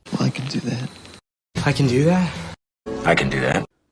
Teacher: This word is pronounced kin in a positive sentence and it's not stressed.